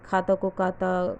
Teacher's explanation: दक्षिण भारतीय में लोग ख को क बोलते हैं जैसे खाता को काता